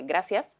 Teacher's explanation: o sea, seseando como a la andaluza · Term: seseo